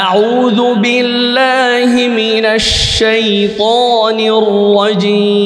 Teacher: শিনটার মধ্যে উচ্চারণ করার সময় পুরা মুখটা বাতাস দিয়ে ভরে যাবে